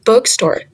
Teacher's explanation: The stress is on the word book. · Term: compound